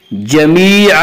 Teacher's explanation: या मद्दा को एक अलिफ के बराबर खींच कर पढ़ेंगे।